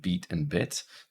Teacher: So in the words beat and bit, They're very close to the same pronunciation, the same place in the mouth, beat and bit. The only difference is with beat, your tongue is tense, and in bit, your tongue is not as tense.